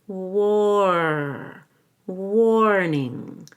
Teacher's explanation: make sure you actually have an ER sound in there so we'll do it with a long o and an ER